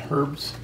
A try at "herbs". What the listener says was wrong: Herbs. Herbs. Herbs. The H is silent. It's silent.